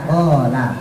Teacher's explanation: Memang marotnya ada di belakang, ya terhubung sama bagian pangkal lidah. Sampai amandel ini lurus. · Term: qaf